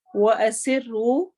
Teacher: ہونٹ گول ہوں گے، اور سین میں سیٹی کی آواز آئے گی